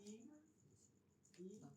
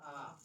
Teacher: ই উচ্চারণ করলে মুখটা ছোট হতে বাধ্য, মুখের ভিতরে শূন্য স্থান ছোট হতে বাধ্য। আর যখন আ বলবো তখন সেটাকে মুখটা খুলতে বাধ্য, বড় হতেই হবে। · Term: সংবৃত